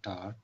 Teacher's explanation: टा साउंड फिर क्या होता है, पफ ऑफ एयर माउथ से आ जाता है, ठीक है, लेकिन टार में, स्टार में ये नहीं आ जाता, सिर्फ ये चेंजेस होते हैं, अनयूजुअल प्रोनाउंसिएशन।